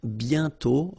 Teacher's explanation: You write it but you don't pronounce it. And then the final T is not pronounced.